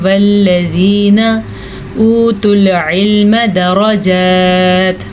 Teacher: اچھا, بعض لوگ اس کو پھر سے پڑھتے ہیں والذین, غلط ہے, اس کو پڑھنا ہے والذین اوتوا العلم درجات. را کو پر پڑھنا ہے, کھڑی زبر کو درست طریقے سے ادا کرنا ہے, اور تا کے پر وقف کرنے کی وجہ سے تا پہ ساکن بن جائے گا.